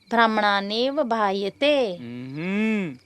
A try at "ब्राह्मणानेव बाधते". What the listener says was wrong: ब्राह्मणानेव बायते नहीं, ब्राह्मणानेव बाधते।